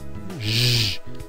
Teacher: Já o j, constritiva, fricativa, sonora, palatal, ela utiliza a corda vocal